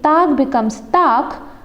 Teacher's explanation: the g is devoicing to k